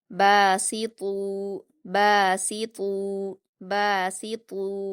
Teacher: سین پر حرکتیں جلدی پڑھیں گے، سی، باسی۔ طوا پر واو مدہ ہے، 2 حرکات کھینچ کر پر پڑھیں گے